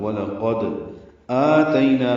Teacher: قواعد اس طرح ہے: وَلَقَدْ واو لام جلدی سے پڑھیں گے، لام باریک، قاف پر ہے موٹا کریں گے، دال ساکن پہ قلقلہ ہے. وَلَقَدْ آتَيْنَا میں آ مد بدل ہے، 2 حرکات لمبا کریں گے